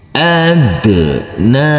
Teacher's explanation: huruf nun harus dibaca panjang dengan panjang dua harakat karena huruf nun di atasnya ada huruf alif kecil yang berdiri